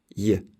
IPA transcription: j